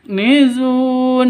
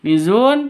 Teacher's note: Hamas harus ada desis atau nafasnya yang keluar nizun seperti itu nizun panjang boleh dua boleh empat boleh enam ketukan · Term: Mad Arid lukun